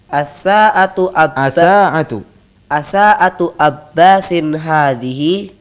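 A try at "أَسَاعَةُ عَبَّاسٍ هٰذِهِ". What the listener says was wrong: Coba antum ainnya kurang kelihatan.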